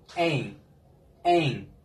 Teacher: Sanki böyle N ile M arası bir telaffuz vereceksiniz.